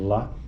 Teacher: durante a produção da vogal a a úvula Deverá estar levantada Portanto o ar não terá acesso à cavidade nasal e não haverá ressonância nessa cavidade